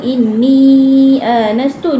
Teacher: kalau kita sambung inni anastu ni empat harakat